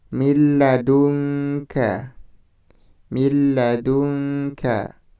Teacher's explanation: Jadi di situ nun mati bertemu dengan huruf lam dimasukkan, nun matinya dimasukkan ke dalam huruf lam, tapi tanpa dengan dengung. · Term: idgham bila gunnah